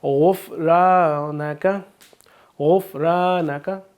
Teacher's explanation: गाइन को हम हरूफ मुसालिया तो उसको हम पुर पढ़ेंगे।